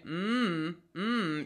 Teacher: they call it in like speech so whenever you say mmm-hmm you'll notice that my mouth is closed and it's all going into my nose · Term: nasal consonant